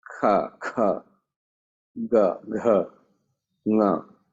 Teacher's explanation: In Sanskrit, when we say certain sound, it comes from certain part, like the throat area. When we say kha, kha, kha, ga, gha, you can't say from the front part. It has to come from the guttural, the throat.